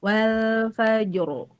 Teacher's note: Jadi wal fajri kalau waqaf dia jadi tebal